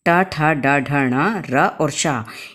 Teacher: ट ठ ड ढ ण र और शा, इन वर्णों का उच्चारण स्थान मूर्धा होती है